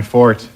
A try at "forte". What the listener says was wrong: It's just that it's not fort. It's pronounced forte.